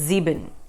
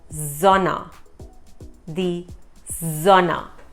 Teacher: But the Germans pronounce S as a Z.